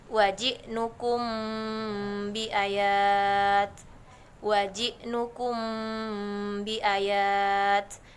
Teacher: Syafawi merupakan hukum mim mati apabila mim bertemu dengan huruf ba cara membacanya itu dengan samar-samar pada bibir lalu didengungkan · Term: Ikhfa Syafawi